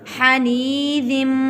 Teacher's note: یہاں پر اظہار ہوگا، یعنی کہ گنہ نہیں ہوگا۔ ہم لفظ کو واضح کر کے ادا کریں گے: حنیذم۔